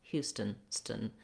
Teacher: I move very quickly from that T sound to the N sound